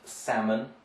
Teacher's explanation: one so it's pronounced salmon right the fish the redfish so we would take out the l the l is not pronounced there